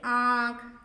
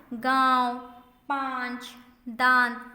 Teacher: इसे नाक और गले दोनों से बोला जाता है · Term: अनुनासिक